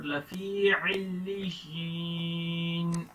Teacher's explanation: لفی کو تھوڑا سا لمبا کریں گے, ایک الف کے برابر